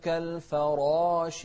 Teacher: شوف الراء مفخمة بعدها ألف في أعلى مراتب التفخيم